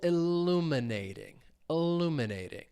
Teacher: Stress is on that second syllable.